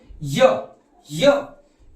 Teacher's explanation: य भी हमारा किससे उच्चारित होगा तालू से उच्चारित होगा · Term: तालव्य वर्ण